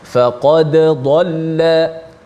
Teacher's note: Maka kita baca secara izhar, baca secara jelaskan dal mati, dan kebetulan huruf dal ada qalqalah, pastikan bunyi qalqalah tu.